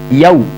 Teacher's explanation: waw sukun ditekan yaw, dan yaw tidak boleh bunyi o tapi u